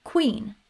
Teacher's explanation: which is a K and W sound together, as in queen.